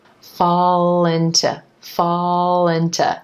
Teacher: that dark L linking over in front of the vowel I and into, fall into, making the word sound like linto, linto, except listen again, the word into is becoming into, into.